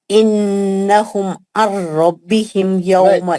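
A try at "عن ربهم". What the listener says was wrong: नहीं, आपका नून का आवाज आ रहा आपके पढ़ने में।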